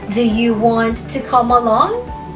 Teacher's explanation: Rising intonation dahil ang sagot sa tanong na yan ay pwedeng yes or no.